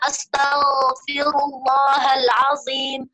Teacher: Hanya saja waktu menyebutkan zo misalnya astaghfirullahalazim, zo itu pangkal lidah kita naik karena dia huruf isti'la